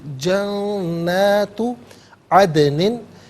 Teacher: यहाँ दाल साकिन है, कलकला किया जाएगा, आवाज़ लौटती भी महसूस होनी चाहिए।